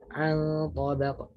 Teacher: To itu makhrajnya di dhahru tarf lisan, sedangkan nun itu makhrajnya di tarf lisan. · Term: ikhfa